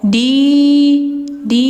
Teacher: Fad khuli fi ibadi sidin-nya dua harakat panjang karena setelahnya ada ya mati huruf mad thobi'i